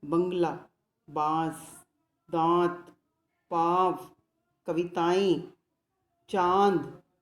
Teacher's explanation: इनका उच्चारण बोलते समय हवा नाक और मुंह दोनों से निकलती है और ऊपर चांद बिंदु लगाते हैं। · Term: अनुनासिक